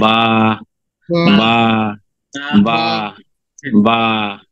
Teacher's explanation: ঠোঁট মিশাবে, বা ছেড়ে দিবেন।